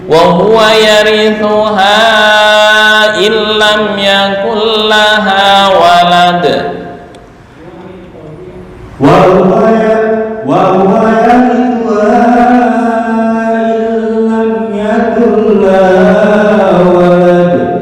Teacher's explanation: namanya idgham bila gunnah. Ya. Idgham itu menggabungkan tanpa dengung. Illam yakun, bukan illam, itu kelamaan.